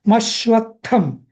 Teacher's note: त्याचा उच्चार खरा डबल होतो मशवथम अस शहा डबल येतो म आणि हा त सुद्धा डबल येतो मशव असा आता रव्य